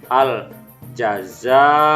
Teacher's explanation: Za dibaca panjang 5-6 harokat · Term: mad wajib muttasil